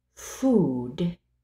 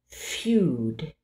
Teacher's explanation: alternating between a word without pronouncing the J Glide and then adding it